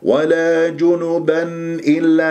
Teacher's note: نسمع النون المظهرة، لا تقطع صوت النون المظهرة، جيب المخرجين اللساني للنون والخيشومي، لا تستعجل، هذا هو إظهار النون.